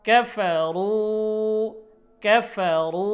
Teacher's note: রু রর উচ্চারণ মোটা হবে এবং একালিফ মাদ হবে।